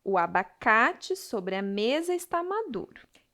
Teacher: da palavra mesa a sílaba tônica é me · na palavra está a sílaba tônica Tá